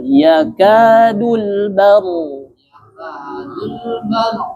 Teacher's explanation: Lalu ro sukun sebelumnya fathah bertebal.